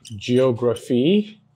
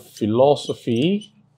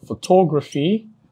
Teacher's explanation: PHY is the suffix, then the main or primary stress falls on antepenultimate syllable, that's third to the last syllable